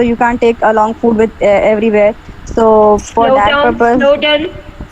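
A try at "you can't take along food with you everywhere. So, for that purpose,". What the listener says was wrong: Slow down. Your rate of speech is very high, and you are not pausing when it is required. So definitely pause and remember the intonation pattern. Like you have to follow the intonation pattern. That is when you need to, your pitch should go high, when it should go down, and your voice modulation is also equally important.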